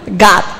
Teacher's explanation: God antara O sama A.